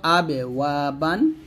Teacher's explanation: এই বাটা আমরা দুই ঠোঁটের ভেজা অংশ থেকে মিলাবো, বা পাতলা উচ্চারণ করবো